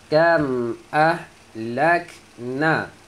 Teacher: huruf kaf ada bunyi angin, keluarkan sifat hams dia.